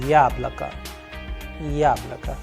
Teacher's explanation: the first vowel yah is having the stress or the udarin